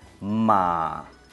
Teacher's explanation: Tercer tono, descendente y ascendente en el mismo movimiento de sonido